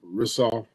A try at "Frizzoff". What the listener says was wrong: Rizzoff. There's an F in the beginning, and the S is like a Z, but Frizzoff, like a Z.